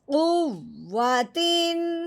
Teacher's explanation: اب ہم نے تنوین پہ غنہ نہیں کرنا، بغیر غنے کے اظہار کے ساتھ پڑھنا ہے